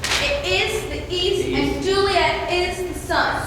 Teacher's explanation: usually following the pattern of an unstressed syllable followed by a stressed syllable. Da-dum, da-dum, da-dum, da-dum, da-dum. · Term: iambic pentameter